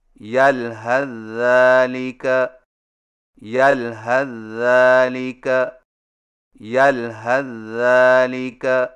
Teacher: Number 8، یلحظ ذالک کو ملا کر پڑھنے کی صورت میں سا کو ذال میں داخل کر کے ایک مشدد ذال سے پڑھیں، یعنی اس طرح یلحظ ذالک یلحظ ذالک یلحظ ذالک۔